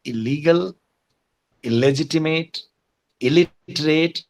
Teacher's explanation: La is a liquid sound and in association with a liquid sound the negative prefix becomes exactly LA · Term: assimilation